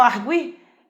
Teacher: Quando eu falo arguir, esse U tem som, então não pode ser dígrafo jamais, né? Nós temos aí um encontro vocálico, um encontro entre o U e o I, um encontro vocálico chamado de ditongo crescente. Percebam que o U do arguir, ele é mais forte que o I, ou melhor, mais fraco que o I.